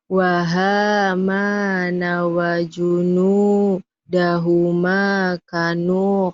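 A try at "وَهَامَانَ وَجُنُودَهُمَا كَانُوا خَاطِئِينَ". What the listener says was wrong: panjang. Kalau kap gini panjang, ada alifnya ini kapnya ya.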